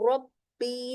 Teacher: बा को तशदीद के साथ है तो रब्बी दो बार ब पढ़नी और बारीक दोनों बार।